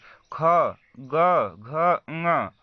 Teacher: ख, ग, घ, ङ, ये सभी पांचों वर्ण आप लोग बोलेंगे तो आवाज जो निकलेगा वो कहाँ से निकलेगा, कंठ से निकलेगा। इसीलिए इसी को हम कंठ व्यंजन कहते हैं।